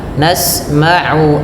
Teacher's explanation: A usahakan jangan sampai masuk ke rongga hidung karena makhraj. Makhraj tempat keluarnya ain tidak dari ee hidung, tapi dari tenggorokan yang tengah.